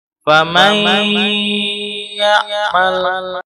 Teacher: Ditahan 3 harokat dan masuk lewat al-khayshum. Jadi tidak boleh lewat rongga mulut, tidak boleh, tapi harus al-khayshum. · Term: gunnah aridiyah